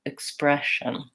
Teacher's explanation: You can aim for using this I vowel, or you can try to think about going short, long, short, expression. And don't worry so much about what vowel is in the reduced syllables.